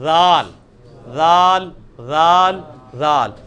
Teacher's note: زال، زال نہیں ہوگا یہ، وہ زا وہ دوسرے والا ہے جو آپ نے سختی کے ساتھ نکالنا ہے، وہ زیڈ والا ہے، وہ یہ والا ہے. اس کو نرمی سے نکالنا ہے، اسی مخرج سے نکلے گا جہاں سے سا نکلا ہے